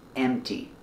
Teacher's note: Don't pronounce the P sound, it's M-T, empty.